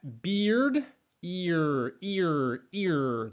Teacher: right after that e sound is the r sound and what happens with our tongue is we bring it back